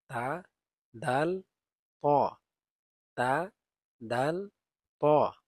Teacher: জিহ্বার আগা সামনের উপরের দুই দাঁতের গুড়ার সঙ্গে লাগিয়ে তা, দাল, ত এই তিনটি অক্ষর উচ্চারিত হয়